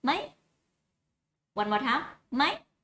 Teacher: That's going up, up, high tone.